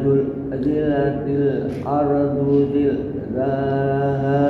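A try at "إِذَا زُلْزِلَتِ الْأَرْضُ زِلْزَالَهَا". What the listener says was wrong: Jangan diputus-putus Pak suaranya. Lam itu dijalankan. Idza zul itu jangan di zul. Nah, itu memutus tuh. Bacaannya terputus jadinya, enggak sempurna. Iza zulzilatil ardu zilzalaha gitu.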